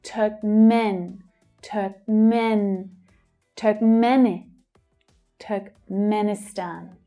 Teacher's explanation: men is the secondary stress here, so we hear it a little more clearly.